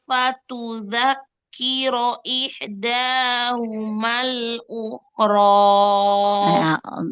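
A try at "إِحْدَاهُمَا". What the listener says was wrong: Dal majukan lagi ujung lidahnya ya, makhrajnya. Majukan lagi makhrajnya dal. Majukan.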